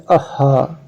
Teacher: इसके उच्चारण में ह के उच्चारण को एक झटका सा देकर श्वास को मुंह से एकदम छोड़ते हैं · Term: विसर्ग